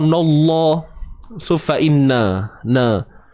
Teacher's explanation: Sebab sebelumnya baris atas. Cuma ingat, yang tebal pada lam bukan pada nun.